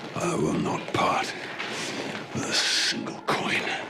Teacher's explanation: you can hear the almost sibilant S of the dragon coming out